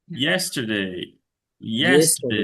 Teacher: আর ইয়েস্টারডে এর ক্ষেত্রে ইয়েসে stress